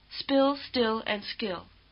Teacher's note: Also, at the beginning of a word like this, they're unvoiced, unlike our B, D, and hard G. We do have unvoiced, unaspirated consonants in English, but only after an S sound, as in spill, still, and skill.